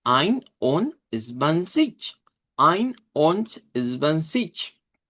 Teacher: Por ejemplo, aquí en ein hay un corte. Und significa y se dice con T, se cambia la D por T.